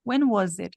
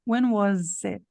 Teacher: esse S aqui ele tem um som de z nessa palavra